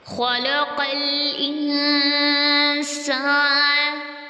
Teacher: انسان سین میں سیٹی آئے گی